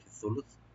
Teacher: ওয়াকফের কারণে লাস্ট যে থাট আছে এটা সাকিন হয়ে যাবে, ফি সুলুস। মিম বাদি, এই বন্টনটা কখন হবে?